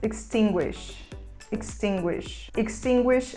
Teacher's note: a gente pronuncia mais próximo do e fechado